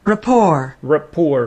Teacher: with the stress on the second syllable